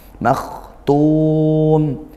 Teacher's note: kha sukun, dialirkan suaranya dan juga nafasnya, dan dia huruf tebal. Makhtum, naikkan pangkal lidahnya.